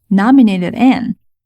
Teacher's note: 所以中间这个 d 是 flap d